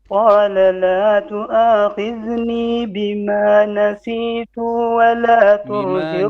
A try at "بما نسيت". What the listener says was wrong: بما نسيت short vowel نسيت.